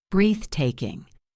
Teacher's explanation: Look at the word breathtaking. The stress is on breath.